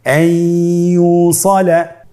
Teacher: ইয়া হরফটি হলো ইদগামে বাগুন্নার হরফ। তাহলে নুনকে আমরা পরবর্তী হরফ ইয়ার সাথে মিলিয়ে গুন্নার সহিত পড়ব